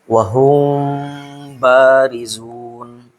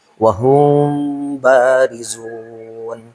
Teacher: Yaitu wahum barizun dengan artian ikhfa-nya itu masih ada sedikit, gitulah. Tidak langsung memasuki huruf eba-nya, ada ikhfa-nya sedikit. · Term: ikhfa syafawi